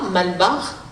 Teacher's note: on accentue le premier A, Malbar, et du coup le deuxième A il disparaît. C'est vraiment typiquement le fonctionnement du tamoul qui fait que le mot Malbar se prononce Malbar à la Réunion et pas Malabar.